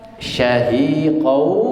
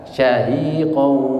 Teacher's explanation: qau tanwin ketemu wawu itu idgham bihunnah, didengungkan